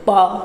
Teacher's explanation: तो बोल के देखिए प दोनों ओठ सटे है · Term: ओष्ठ